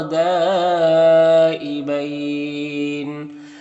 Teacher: مد لین عارض میں طول توسط قصر تینوں جائز ہے، لیکن قصر بہتر ہے، یعنی ایک الف کے برابر کھینچ کر پڑھنا بہتر ہے